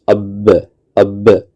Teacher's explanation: بولیں اب، تو ہم دیکھتے ہیں کہ ہمارے دونوں ہونٹ آپس میں مل جاتے ہیں، اب اب، اس لیے بے کا مخرج جو ہے وہ دونوں ہونٹ ہے۔